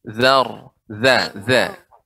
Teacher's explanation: za, ujung lidah dengan gigi seri atas